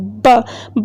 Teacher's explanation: पहले हम लिप्स को क्लोज करेंगे, फिर हमारे अंदर हवा जो है वो भरी जाएगी, फिर एकदम से हम उसको रिलीज करेंगे